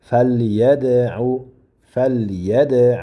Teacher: Keyin yadan keyin sukunlik dal keldi. Bu bu dal harfi qalqala qilinadi